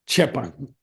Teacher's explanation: So chepa is a soft. It's the aspirated version of cha